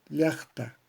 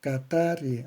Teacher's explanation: la elevación de la voz es siempre en la grave o llana, la penúltima sílaba